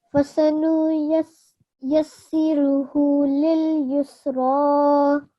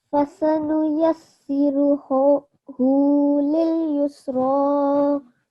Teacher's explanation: This would be a thick sounding ra because it has a vertical fathah on it.